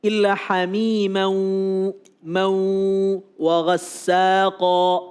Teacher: Diidghamkan, ditekan. dan ditahan paling tidak 2 harakat. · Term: idgham bi gunnah